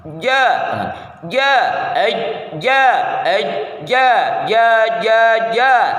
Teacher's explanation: hentikan nafas dan suara pada makhrjnya jahr dan syiddah